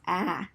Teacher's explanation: the lowest part of your mouth, the least tense of it, and it's not rounded because your mouth just falls open, same as ah, your mouth just falls open.